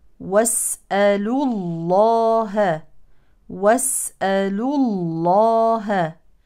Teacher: من التقاء الساكنين ونقرا من اللام المضمومه الى لام اسم الجلاله لذلك تفخم لاسم الجلاله لانها سبقت بضم